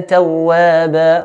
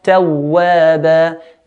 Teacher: Tawwaba is mad, iwad, two counts, we'll stretch the ba to two counts